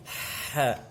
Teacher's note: ha yang ada di tenggorokan bagian tengah itu kalau berharokat, maka udara akan keluar terlebih dahulu